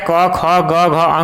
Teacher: इन सभी वर्णों का उच्चारण कंठ से होता है।